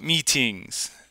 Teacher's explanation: That second I vowel is tenser and it goes to an E.